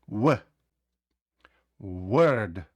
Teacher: Ми не закриваємо губи на звук в.